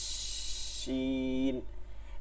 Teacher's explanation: জিব্বা আর তালুর মাঝখান থেকে বাতাসটা চলতে থাকবে, ঠিক আছে, এরকম জিব্বা তালু এর মধ্যে থেকে একটা হালকা চিকন করে বাতাস চলতে থাকবে